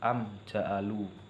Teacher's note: izhar syafawi adalah dengan dilafalkan terang dan jelas tidak boleh mendengung posisi bibir mengatup ketika membaca huruf mim sukun yang bertemu dengan huruf-huruf izhar syafawi